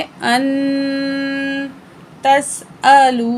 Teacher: नून साकिन के बाद ता हरूफ इख्फा में से है तो हम नून की आवाज़ को नाक में छुपा के पढ़ेंगे